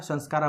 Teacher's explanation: म का अनुस्वार हो जा रहा था और उससे पहले आधा दंत्य स का आगमन हो जा रहा था